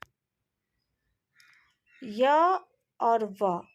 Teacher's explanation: यह दो वर्णों का उच्चारण करते समय मुखा न के बराबर स्पर्श करते हैं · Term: अर्ध स्वर